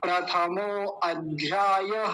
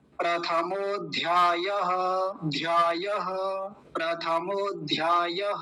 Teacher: बीच में अ नहीं लगाएंगे ये ध्यान रखेंगे